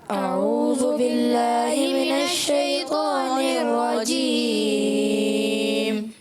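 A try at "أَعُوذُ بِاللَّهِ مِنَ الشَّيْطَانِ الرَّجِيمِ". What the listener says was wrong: اچھا کسی بچے کی آئی اعوذو، یہ ذال ہے، زا نہیں ہے، اس کو درست کرنا ہے۔ اعوذ باللہ من الشیطان الرجیم،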